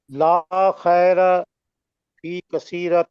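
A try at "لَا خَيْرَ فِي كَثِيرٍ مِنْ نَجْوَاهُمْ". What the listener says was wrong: کثیرہ تن نہیں ہے,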